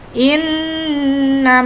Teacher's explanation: mencari hukum bacaan tajwidnya ya ini sini misalnya Inna Inna itu ada Non bertasydid berarti ini namanya guna sehingga di sini nanti harus mendengung